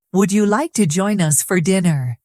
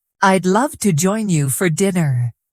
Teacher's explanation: Question. Would you like to join us for dinner? Rising tone. Answer. I'd love to join you for dinner. Falling tone.